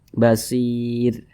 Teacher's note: Kemudian ro dibaca tipis karena di belakangnya ada huruf ya sukun. Nah, kalau kita berhenti pada huruf ro, maka huruf ro-nya dibaca tipis